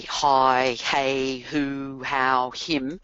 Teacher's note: If you think about when you say hi, hey, who, how, him, your mouth immediately gets into shape for that. And even though the H itself is not voiced, um sometimes it's hard to separate it from the voicing in the vowel sound that follows.